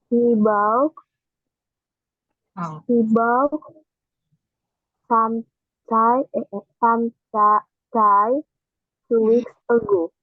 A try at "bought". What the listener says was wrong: Ya, boat-nya G-nya nggak usah dibaca. Boat. boat